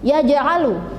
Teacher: hurufnya yang berupa jim yang bersukun, jadi membacanya juga harus yaitu memantul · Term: qalqalah sughra